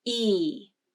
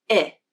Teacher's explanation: There's less muscular tension with I.